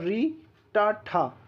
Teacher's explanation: इस समूह के वर्णों का उच्चारण मूर्धा से होता है।